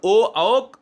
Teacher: ओ जब बोलते हो तो आपके ओष्ठ भी, यानी आपके ओंठ गोलाकार हो जाते हैं, इसलिए इसको कंठ्योष्ठ कहा जाता है।